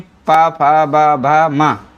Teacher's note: तो पवर्ग वाली जितनी भी सीरीज है, तो ये सीरीज जो है पवर्ग का उच्चारण जो है ओष्ठ से होता है